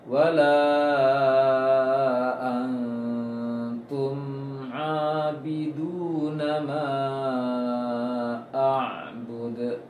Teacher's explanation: Ain itu dijalankan sedikit, juga tidak terlalu longgar hurufnya, namun dijalankan sedikit. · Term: ain sukun